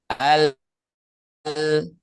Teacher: Nah, coba di sambil diucapkan al nah ya kan. Jadi si ujung ujung lidah tuh kan posisinya digusi gigi seri atas kan ya. Nah itu itu berarti makhraj huruf lam.